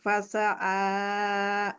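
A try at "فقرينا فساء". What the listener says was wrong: পাশা আতে কোনো মাদ নাই আপু। ফাঁসা আতে আবার মাদ হয়েছে, ফাঁসা আক।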